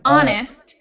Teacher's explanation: the word honest has an H in the beginning, but it's not pronounced at all. So the word honest is without the H sound, but spelled with the H.